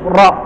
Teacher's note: pengucapan huruf disertai dengan bergetarnya ujung lidah, dan ini hanya dimiliki oleh satu huruf, yaitu huruf ro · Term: at-takrir